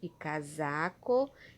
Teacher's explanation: casaco é com s mas tem um som de z